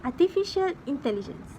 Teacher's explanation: he used a falling intonation on the last item to indicate that the list has ended.